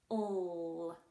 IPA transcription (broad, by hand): l